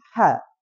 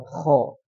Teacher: Apa perbedaan K dan ha kalau dari makhraj itu sudah beda kalau ha itu di tengah kalau ko di atas